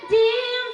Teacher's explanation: জিমের মাখরাজ জিহবার মাঝখান তার বরাবর উপরে লাগিয়ে জিম সহি হয়ে আসবে।